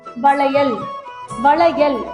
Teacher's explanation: இந்த எழுத்துக்கு பேரு மடக்கு ல நாக்க மடக்கி உச்சரிக்கணும்